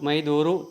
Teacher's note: ನಿಯಮ ಹೇಳುತ್ತೆ ಮೈ ಪ್ಲಸ್ ತೋರು ಮೈ ದೋರು ತ ಬದಲಿಗೆ ದ ಬಂದಿದೆ ಉತ್ತರ ಪದ ಆದಿಯಲ್ಲಿರುವ ತ ಬದಲಿಗೆ ದ ಅದು ಆದೇಶ ಸಂಧಿ